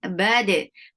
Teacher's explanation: keep bal light and attach with dal. Dal will get sifa of qalqala.